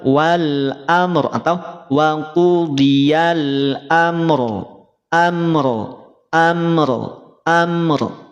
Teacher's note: angkat pangkal lidahnya Nah bisa tebal atau tafkhim · Ada mim sukun, kemudian ada fathah. Berarti huruf ro-nya menjadi tebal.